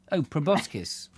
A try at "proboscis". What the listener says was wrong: No, it's a silent C. Proboscis.